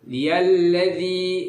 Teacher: Nah, ciri dari alif lam syamsiyah, nah jadi dialladzi, jadi alif lamnya itu tidak terlalu terbaca ya, tidak terlalu jelas, samar